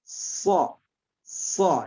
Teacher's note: Ya, so itu di ujung lidah atas ya, ketemu dengan pangkal gigi seri depan atas